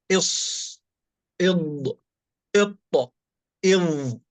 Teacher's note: التصاق طائفتي اللسان بالحنك الأعلى عند النطق بحروف الإطباق